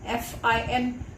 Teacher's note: I don't make any closure. There is a gap between my upper teeth and the lower lip. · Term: fricative